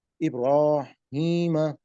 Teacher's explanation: اب یہ دیکھیے گا کہ را کے اوپر کھڑی حرکت آ گیا، اس کو موٹا کر دیا ہم نے. ابراہیم، اب یہ یا ساکن سے پہلے زیر آ گیا تو یہ یا مدہ ہو گیا، اس کو کم از کم 2 حرکات تک بڑھائیں گے ہم.